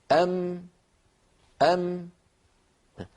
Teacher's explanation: الشفتان تقرع إحداهما الأخرى ويصاحب ذلك غنة من الخيشوم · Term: الغنة